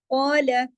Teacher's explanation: اس میں کاف ہے موٹا، الف بھی موٹا ہو جائے گا ، قال، کاف کے ساتھ الف مدہ ہے، 2 حرکات کھینچے